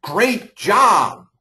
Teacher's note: you can hear that my intensity just went way up. I put a pitch to it. My amplitude increased. And even my duration. · My amplitude increased. And even my duration. was longer.